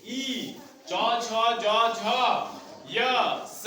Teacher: ये सब तालु से निकलते हैं, इसीलिए इसको तालव्य कहा गया है।